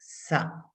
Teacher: tip of your the position of the tip of your tongue when you say sa your tongue is flat right behind your teeth